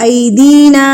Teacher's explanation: یہ مد منفصل یعنی کہ چھوٹی مد، اس کو ہم نے 3 حرکات کے برابر کھینچ کے پڑھنا ہے